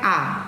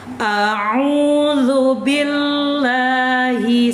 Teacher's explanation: Tadi kan Ibu baca udah praktek a. A itu terbuka los. Kalau ain harus dicongkel di tengahnya. Tengah tenggorokan dicongkel, dicoek. Begitu. Dicubit biar nggak sampai los jadi a.